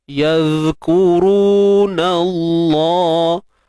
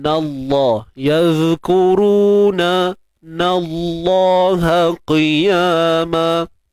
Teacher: Kalimah Allah ni kita tebalkan sebab sebelum dia ada nun baris atas kan. So sebabkan baris atas sebelum kalimah Allah ni, maka tebal bunyinya.